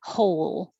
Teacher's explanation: begin with the h and finish holding the l longer than you think you need to so that it can be heard whole and then that l